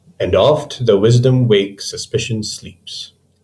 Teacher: It's a rhythm that combines 5 iambs, in other words, 10 syllables per line. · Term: iambic pentameter